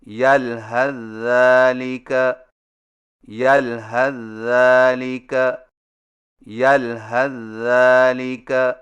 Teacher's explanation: سا کو ذال میں داخل کر کے ایک مشدد ذال سے پڑھیں، یعنی اس طرح یلحظ ذالک یلحظ ذالک یلحظ ذالک.